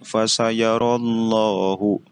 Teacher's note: Karena memiliki alasan, yaitu lafadz Allah yang didahului oleh harokat fathah. Jadi setiap lafadz Allah yang didahului oleh harokat fathah dan harokat doma, maka memiliki hukum bacaan lam tafkhim, yaitu harus dibaca dengan tebal